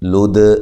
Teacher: دال پہ قلقلہ کرنا ہے، دال کو ہلانا ہے